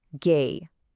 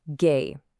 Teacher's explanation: the tone here is the first tone, the exact same high-level tone we used for mother, ma.